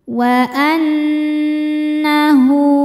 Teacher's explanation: Nunnya dihukumi dhunah musyaddadah. Karena nun bertasydid, cara bacanya berdengung. Tahan dengungannya kurang lebih dua harakat.